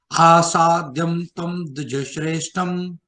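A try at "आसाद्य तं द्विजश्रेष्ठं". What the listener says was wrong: Asadya only, not asadyam. Asadyatam. Asadyatam Dvijasreshtham.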